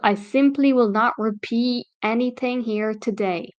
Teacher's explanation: especially with the American accent she drops the T this is a a type of connected speech